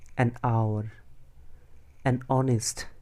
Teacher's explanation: অনেস্ট, অনেস্টের এইচ থাকা সত্ত্বেও আমরা অ্যান ব্যবহার করি, তার কারণ অনেস্টের এইচটা মিউট, অনেস্টের অ উচ্চারণ হয়, স্বরধ্বনি উচ্চারণ হয়